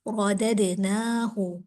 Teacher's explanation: ہا کا مخرج حلق، حلق والے حروف میں سے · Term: حروف حلقی